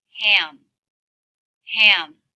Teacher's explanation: you can hear the sound as my tongue relaxes down in the back before the lips closed for the M sound